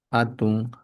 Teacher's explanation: Si alguien dice atun, ya se puede entender que suprimió dentro de su dialecto la ja, pero su sonido siempre estará desde una mirada más antigua, entonces hatun, ¿no? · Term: elisión